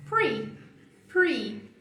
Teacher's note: previously começa com o i exagerado de beach.